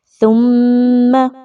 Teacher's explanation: میم مشدد کا غنہ ہے تو آواز کو ناک میں لے کے جائیں گے، غنہ ہوگا میم مشدد کا۔